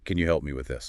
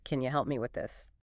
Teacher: And the breakdown, can you, often reduces to the weaker form, can ya. And help me tends to link smoothly, sometimes sounding almost like helmy. That P sound can be very light or even blend into the M. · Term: linked help me